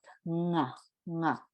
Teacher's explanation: it's the back of the mouth, nga, nga, where the soft palate and the tongue meet together, and it creates that specific sound.